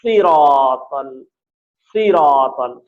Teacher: صاد موٹا ادا ہوگا، تھوڑا سا دیر ہے اس لیے بہت موٹا نہیں، لیکن پھر بھی سین سے موٹا ہی ادا ہوگا